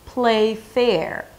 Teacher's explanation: I bring the bottom lip to the top teeth for the F sound